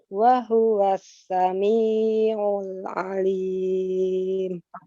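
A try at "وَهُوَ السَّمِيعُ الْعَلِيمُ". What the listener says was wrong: Kurangi panjangnya pada kata sami'u, 2 harokat kan, diayunkan sami'u. untuk evaluasinya ini yang 2 harokat ya. Yang 2 harokatnya agak lebih dari 2 harokat tuh, jadi 3 harokat.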